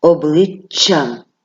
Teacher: українській мові завжди твердий навіть коли після нього стоїть Я обличчям ви відчули що я вимовила подовжено і твердий приголосний звук